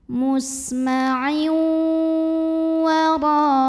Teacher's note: Lalu berikutnya ada idgham bi gunnah, karena ada tanwin kasrah yang bertemu dengan huruf waw, maka tanwinnya masuk ke waw disertai dengungan. Jadi ditahan lagi di sini.